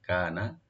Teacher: কাফ এখানে light করে পড়বেন, একালে টানবেন, নুনে কোনো টান হবে না